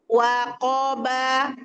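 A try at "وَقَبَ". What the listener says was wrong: Nah, masih memanjang wa-nya. Waqoba. Mungkin karena tegang ya bacanya, jadi memanjang beberapa tempat ya.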